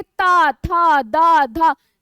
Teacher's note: जीवा किसको, दांत को स्पर्श कर रही है ना, यानी कि ये दंत है